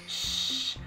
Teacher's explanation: SH has a longer wind, you can say. It's more air that is expelled through the mouth. It's like wind blowing.